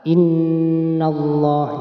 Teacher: Nah, perhatikan, ini adalah bacaan gunnah, harus kita baca mendengung terlebih dahulu ya. Kita tekan terlebih dahulu kemudian dibaca mendengung 2 harokat.